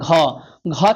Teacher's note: घ आता है कवर्ग में और कवर्ग बोला जाता है कंठ से